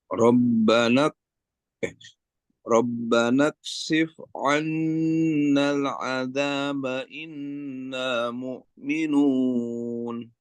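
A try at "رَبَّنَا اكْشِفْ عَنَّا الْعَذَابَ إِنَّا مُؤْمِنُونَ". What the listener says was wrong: Tahan sedikit innanya dan annanya. Tambah lagi sedikit.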